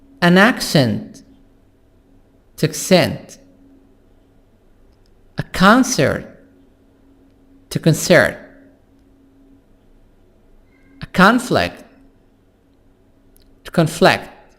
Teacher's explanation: Change the stress from the first syllable for nouns to the second syllable for verbs.